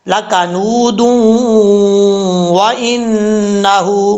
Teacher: آگے واو آ رہا ہے، یہاں پہ ادغام یرملون ہوگا، نون تنوین کا ادغام ہوگا